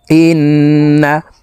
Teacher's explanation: এই হামজা তাশদি নুনের সাথে নাকের বাঁশি থেকে তিন সেকেন্ড পরিমাণ গুন্নাহ করে ধরে রেখে পড়বো এই গুন্নাহকে ওয়াজিব গুন্নাহ বলা হয় হামজাহ নুন জের ইন্ নুন